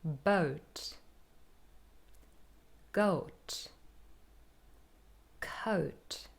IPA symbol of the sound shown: əʊ